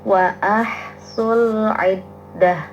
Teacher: Ha sukun tidak boleh ada pantulan suara. Jelas bacanya tasdid.